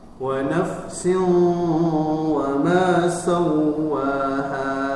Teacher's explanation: Ya, idgham bil ghunnah. Dengung, ya, dibaca dengung 2 sampai 3 harokat. Kemudian dimasukkan ke hidung, ya.